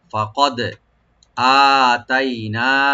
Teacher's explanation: ফা ওপেন রাখবেন কাফটাকে ডিপ করে দালে অবশ্যই এখানে কলকলা করতে হবে ইকু করে পড়বো আমরা ফাকাদ